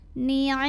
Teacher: Cara bacanya dengung, bunyi m-nya tahan sampai ada getaran halus ke hidung kurang lebih 2 harokat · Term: gunnah musyaddadah